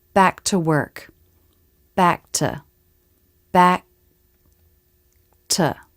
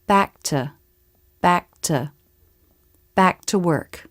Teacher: I'm not saying back to k with a full release of the K. I'm holding the air for a fraction of a second with my throat, making that stop. Then I go right into the release of the T consonant. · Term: skip the release